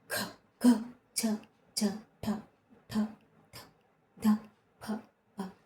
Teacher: మన శక్తినంతా ఉపయోగించి ఒత్తి పట్టి పలుకుతాము ఈ అక్షరాలను. ఇవి మళ్ళీ జట్కతో కూడి ఉంటాయి. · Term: మహాప్రాణాక్షరాలు